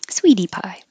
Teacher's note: The T changes to a D because it's between two voiced sounds.